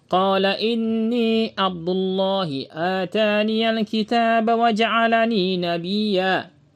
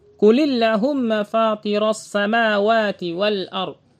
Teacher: menebalkan pengucapan huruf lam pada lafaz Allah apabila sebelumnya ada harokat fathah dan dhamma seperti lafaz Abdullah. Begitu juga lafaz Allah ditambahkan huruf mim bertasydid menjadi Allahumma.